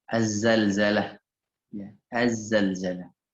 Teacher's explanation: penyebutannya bukan al-zalzalah, bukan ya teman-teman, Az-Zalzalah karena dia idgham syamsiyah. Az-Zalzalah bukan al-zalzalah ya, selama ini kita salah nyebut nih.